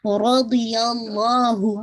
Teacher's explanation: رضی اللہ، ضاد آپ کا ہیوی رہے گا، ناٹ ردی، دی نہیں ضی. رضی اللہ، لام جلالہ ہیوی کیجیے گا کیونکہ اس سے پہلے فتح ہے